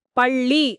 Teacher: இது எப்படி பிறக்கிறதுனா நாக்கின் இரு பக்கங்கள் தடித்து மேல் அன்னத்தின் நடுப்பகுதியை தொடுவதால் பிறக்கும். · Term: பொது ழ